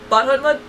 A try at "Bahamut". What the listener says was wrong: You mean Bahamut? You're saying Bahamut. I don't know if you just said it wrong, but I know there's not an extra T in there, because I could have sworn you said Bahamut.